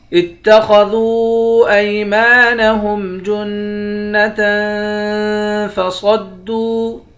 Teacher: خا کو موٹا پڑھیں گے. دال کو واو کے ساتھ ملا کر واو کو ایک الف کے برابر کھینچیں گے. اس واو کے اوپر مد ہے. اس مد کو 3 الف کے برابر کھینچ کر پڑھتے ہیں